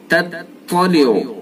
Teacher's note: ता को बारीक, उसके बाद ता को पुर करके पढ़ेंगे